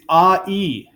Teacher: I is the ah sound and the E sound smashed together. So you go, anytime you say I, you're starting with ah and ending with E. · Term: vowel diphthong